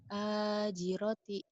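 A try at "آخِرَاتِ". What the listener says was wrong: Aji roti. Tadi salahnya di situ ji. Akhirati.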